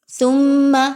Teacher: ثم سا اور میم کو آپس میں ملاتے ہوئے میم مشدد کا غنہ کیجئے